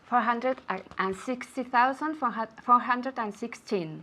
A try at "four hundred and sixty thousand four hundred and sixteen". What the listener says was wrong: she has the the intonation sixteen it should go down